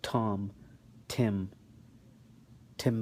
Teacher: in the T there's an exhalation of air which you can notice when you pronounce the T · Now, the difference between the Ta or the T sound in the English and the Ta sound in Arabic is that in the T there is an exhalation of air, which you can notice when you pronounce the T. So why don't you, if you want, you can put your hand in front of your mouth and say Tom, Tim, Timbuktu.